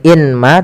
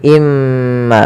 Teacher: Bukan lagi inma tapi imma sambil ditahan gunahnya dua harakat. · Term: idgam bighunah, idgham bi gunnah